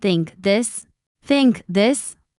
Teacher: The tongue comes gently between the teeth. For think, it's soft. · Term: th sound